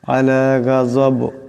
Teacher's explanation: আলা গাজব, এখানে দম সারলে বা সাকিন হয়ে যাবে, বা কলকলার হরফ, এখানে আওয়াজটা একটা ঝটকা খাবে